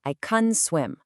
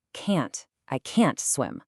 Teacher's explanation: In fast American English, the positive word can is often really quick and soft. · the positive word can is often really quick and soft. It sounds like kun. I can swim. But the negative, can't, gets all the stress and has a really clear vowel sound. Can't. I can't swim.